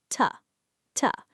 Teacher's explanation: Keep your teeth close together, hit a light, rapid tap of your tongue tip on the alveolar ridge, and let out a micro grunt. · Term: lip deactivation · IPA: [tə]